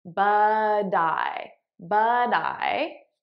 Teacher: I'm transferring the T sound onto the next word. Now you'll notice I'm saying it as a soft D because that's American pronunciation.